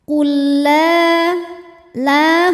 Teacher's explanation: adalah Mad Thobi'i dahohiri sebab ada Alif yang sebelumnya berharakat fathah cara bacanya lam dipanjangkan dua harakat